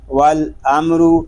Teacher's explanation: واو لام زبر ول، حمزہ میم زبر ام، والام، را پیش رو، والامر۔ میم ساکن میں اظہار شفوی بلا غنہ را پر